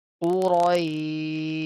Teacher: Ra will be heavy.